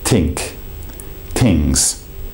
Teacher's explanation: the Italian may change the t h into a t